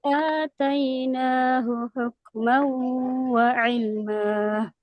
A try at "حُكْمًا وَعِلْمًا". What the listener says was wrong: Huk mau harus ada gunahnya, jangan huk mau. Nah, kalau tadi murni suaranya dari mulut. Nah, harus ada dari hidungnya. Huk mau wa ataina. Hukma wa ilma.